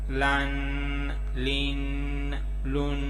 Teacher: ناک میں چھپا کے آواز کو غنہ کرنا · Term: تنوین غنہ